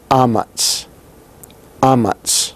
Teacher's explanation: the ah there, is with that glottal stop in front